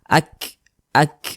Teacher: di sini ada huruf Kaf huruf Kaf ini dia sukun maka cara membunyikannya itu ada nafas yang mengalir dia seperti memerecik